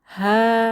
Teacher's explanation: এখানে হা তে আলিফ সগিরা এক আলিফ টেনে পড়বো